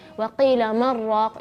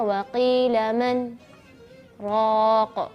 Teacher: Jadi kita tahan nafas, namanya juga saktah, yaitu kita berhenti, ya, di akhir kata yang pertama. Terus kita tidak boleh ambil nafas, kita tahan nafas kita terus baru masuk ke raq.